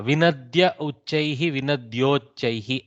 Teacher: a plus u, o, guna sandhi